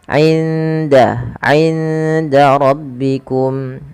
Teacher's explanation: suara indanya nun sukunnya disamarkan ke huruf dal